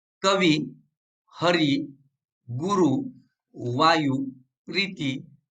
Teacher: तिसरा नियम, कवी, हरी, गुरु, वायू, प्रीती यासारखे तत्सम, तत्सम म्हणजे संस्कृत शब्द, यासारखे तत्सम ऱ्हस्व, इकारांत व उकारांत शब्द मराठीच्या स्वभावानुसार दीर्घांत उच्चारले जातात